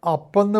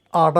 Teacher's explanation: അപ്പെന്ന് പറയുമ്പോൾ വായു പൂട്ടണം, അട എന്ന് പറയുമ്പോൾ വായു പൂട്ടില്ല